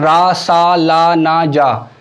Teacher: वत्सर्य व्यंजन, आपकी जो जीभ है वो मसूड़े को छू रही है।